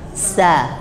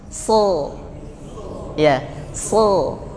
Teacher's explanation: kalau sin itu suaranya ke depan, ya, sa, keluar ke depan gini, sa. Kalau sod keluarnya malah ke atas, so, ya, so.